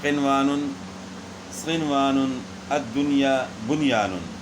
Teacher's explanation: یہ جو ہے نا قرآن پاک میں سے جو ہے نا یہ 4 الفاظ جو ہے نا ان میں ادغام نہیں ہوگا، بلکہ ان میں اظہار کے ساتھ نون پڑھیں گے. نہ غنہ ہوگا نہ ادغام ہوگا